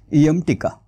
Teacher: म हे ओष्ठ आहे ओष्ठ म्हणजे त्याचा उच्चार करताना फक्त ओठांची हालचाल होते जिभेची हालचाल होत नाही